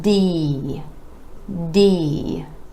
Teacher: If you just hold that sound a little longer, give it a little stretch, and start first with the tongue up behind the teeth to the alveolar ridge for the D sound